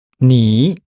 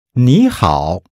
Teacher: the word 你 changes from a third tone into a second tone here.